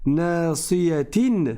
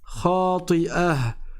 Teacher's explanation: quand je fais la liaison, je dis nasiyatin, je dis kadhibatin, et quand je m'arrête, et donc il n'y a plus de liaison, je dis khati'ah, parce que c'est la fin du verset.